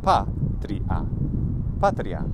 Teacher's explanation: we can also divide it by putting the T and the R together, and then we have patria, patria. And then the first syllable is short.